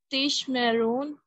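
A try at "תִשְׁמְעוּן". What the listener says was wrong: All right, so this, no R sound, just ooh, ooh, un.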